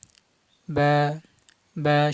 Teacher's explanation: এবার বা হরফ এক আলিফ টেনে বলবেন, যখন উচ্চারণ করবেন হরফ ওই সময় বা বা স্বাভাবিক উচ্চারণ হবে, দুই ঠোঁট মিশে যাবে, ঠোঁটের বিজা অংশ থেকে উচ্চারণ হবে। বা বা স্বাভাবিক যেভাবে দুই ঠোঁট মিলাইলে যেরকম ওরকম বা বা।